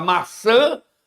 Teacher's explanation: Se eu tiver uma vogal nasal e essa tônica for na vogal nasal, o tio, quase não saía, o tio é um sinal de tonicidade. Então, na palavra maçã, a sílaba tônica é o an. Então, esse tio não é só nasalizador, ele também é um acento tônico, tá?